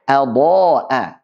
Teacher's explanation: Diselingi oleh huruf dhad yang tebal dan juga alifnya ikut tebal.